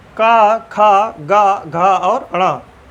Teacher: उनका जो उच्चारण स्थान है वह कंठ है, क्योंकि उनके उच्चारण में जो हमारी जीभ है वह कंठ से टकराती है।